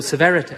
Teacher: he's gone from very posh and heightened rp to this trilled r